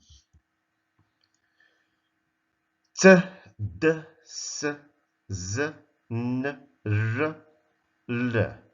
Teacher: They are produced in the same place of articulation, which is the contact between the tongue and the alveolar ridge. That's area behind the teeth. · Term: alveolar sounds